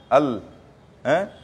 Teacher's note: লামের মখরজ কোথার থেকে আসে বলে জিহ্বার আগের অংশের কিনারা আর পরে দাঁতের মাড়ি